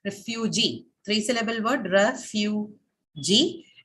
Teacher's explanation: three-syllable word, refugee, and the stress falls on the last syllable G, because your word ends with a long vowel.